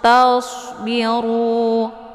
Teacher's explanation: ini shad ini adalah sifatnya shafir, jadi anginnya lebih jelas dan hurufnya adalah tebal ya